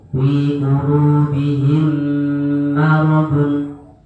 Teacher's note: Yang dibaca dua ketukan hanya satu saja. Mim sukun bertemu dengan mim.